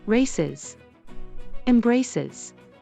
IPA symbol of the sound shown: ɪz